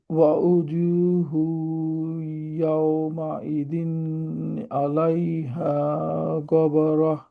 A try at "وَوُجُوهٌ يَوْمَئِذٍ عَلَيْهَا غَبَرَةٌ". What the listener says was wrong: আচ্ছা উজু হুই নাকে ওঠে নাই ওয়া উজু হুই ইয়াউমাইদিন আলাইহা গবারহ গবারহ হ্যাঁ আবার পড়েন